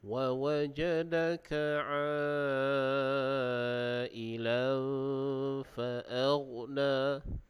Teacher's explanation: ada hukum ikhfa haqiqi. Jadi dibaca dengan dengung dengan kadar 2 harakat.